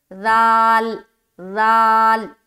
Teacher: یہ جو حرف ذال ہے اسے بہت ہی باریک اور نرمی کے ساتھ ادا کرتے ہیں